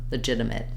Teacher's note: Also, legitimate, you'll notice that this T here, the first T in legitimate, sounds more like a D. It's basically a flap sound.